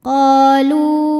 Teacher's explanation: Hukum tajwidnya adalah mad tabi'i dhahiri, sebab ada alif yang sebelumnya berharokat fathah. Cara bacanya, qaf dipanjangkan 2 harokat. Qalu. Lu, hukum tajwidnya adalah mad tabi'i dhahiri, sebab ada waw sukun didahului harokat dhammah.